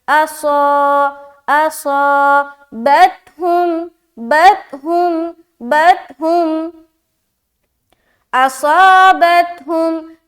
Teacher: الف مدہ کریں گے، اصا موٹا بھی رکھنا ہے · یہاں پر دیکھیں صاد جو ہے نا یہ موٹے حرف میں سے ہے، لیکن اس کے اندر بھی حرف صفیریہ پایا جاتا ہے، جو سیٹی والی صفت ہوتی ہے، صاد کے اندر بھی پایا جاتا ہے